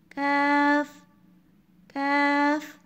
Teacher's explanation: کاف کی ادائیگی زبان کی جڑ تالو کے نرم اور سخت دونوں حصے سے لگے گی تو کاف ادا ہوگا.